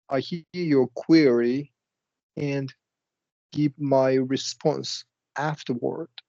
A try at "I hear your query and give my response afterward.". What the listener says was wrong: That's right.